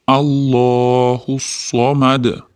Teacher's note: Alloh lafzi doimo o'rtasidagi tashidlillam bir, ikki deguncha miqdorda cho'zib aytiladi. Alloh demasdan Alloh deb aytiladi.